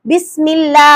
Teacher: ஜேர் வந்துச்சுன்னா அல்லாஹ் வல்லினமா ஓதக்கூடாது மெல்லினமா ஓதணும்